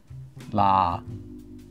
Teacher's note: instead of saying da softly remember try to say la so you're saying la with your tongue position as if it was going to say da